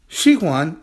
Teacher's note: 喜欢 is she, is a third tone character that's a falling tone and rising tone.